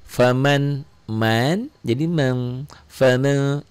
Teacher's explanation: ikhfa bindeng ya ikhfa karena nun mati ketemu syin